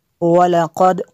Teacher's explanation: قاف کو پر کرنا ہے، دال پہ قلقلہ ہوگا۔ کذب الذین، ذال کو نرم کرنا ہے، آگے بھی ذال ہے، ذال کو بھی نرم کرنا ہے۔